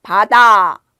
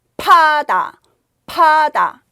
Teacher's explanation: 바다는 입술을 부드럽게 움직이고 바람이 나오지 않죠.